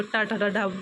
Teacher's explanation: ट वर्ग उच्चारण स्थान की दृष्टि से मूर्धा ध्वनि है।